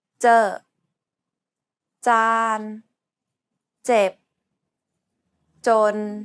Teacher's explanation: English, however, focuses the tip of the tongue to contact the gum ridge, while in Thai, the middle part of the tongue, known as the blade of the tongue, is used to contact the area behind the gum ridge. Also, this is an unaspirated sound, meaning there shouldn't be a burst of air